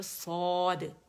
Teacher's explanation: الف مدہ جو ہے جب ہم اسے کھینچتے ہیں الف مدہ کو 2 کاؤنٹ کھینچا جاتا ہے، مد اصلی ہوتا ہے، لیکن کوئی ریزن جب اسے مل جاتی ہے تو پھر اس کی اسٹریچنگ زیادہ ہو جاتی ہے.